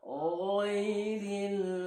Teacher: Huruf g tadi ada di tenggorokan bagian atas.